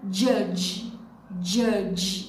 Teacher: vai ser o D mais o som de Z com a perninha para baixo